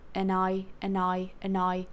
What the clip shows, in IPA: ənaɪ 'dɪd hʌnt